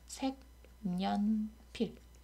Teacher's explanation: 이 경우는 색과 연필이 결합한 합성어인데요. 색이라고 해서 자음으로 끝나는 형태소 뒤에 여라고 해서 반모음 이로 시작하는 모음이 왔으니까 여기에서 니은 첨가가 일어나요.